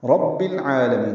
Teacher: للہ رب العالمین، را کو پر پڑھیں گے، با کو العالمین کے لام سے ملا دیں گے، یہ العالمین کا بھی حمزہ عارضی ہے، تو رب العالمین ہوگا۔